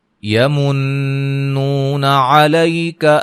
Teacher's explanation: نون مشدد پہ غنہ، واو مدہ ہے